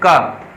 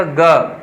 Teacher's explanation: इनमें बहुत कम वायु निकलती है जब हम बोलते हैं। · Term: अल्पप्राण